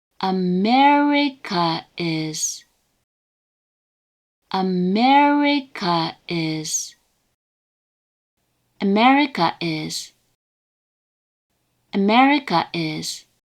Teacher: another pronunciation with the downstep on the third mora